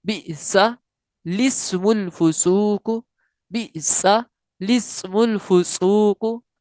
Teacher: इस कलमे में लाम से पहले और लाम के बाद दोनों अलिफ ना पढ़ें, बल्कि लाम को जेर देकर पढ़ें।